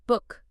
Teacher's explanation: Lips are a bit rounded, but relaxed, not tight. Tongue is high and back, but again, relaxed. It's a short sound. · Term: U sound